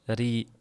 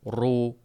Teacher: Ingichkada orqa qismi koʻtarilmaydi. Yogʻonda orqa qismi koʻtariladi.